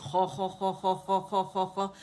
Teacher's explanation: زبان کی جڑ اٹھا کے نرم تالو سے لگائیں